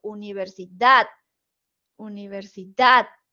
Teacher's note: dad es la sílaba tónica, es el acento prosódico